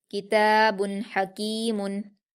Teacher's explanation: हा पर हरकतें जल्दी पढ़ेंगे, हलक से अदा करेंगे